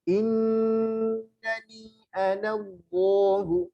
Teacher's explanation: Jadi kalau ingin menebalkan huruf diangkat lidahnya, lam juga diangkat lidah, belakangnya diangkat, belakang lidah. Anallahu la 5 harokat.